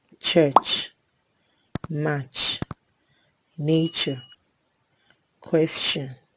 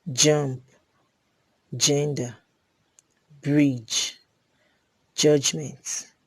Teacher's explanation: Also, we have the post-alveolar affricates, which are ch and j. Ch is a voiceless post-alveolar affricate and j is a voiced post-alveolar affricate.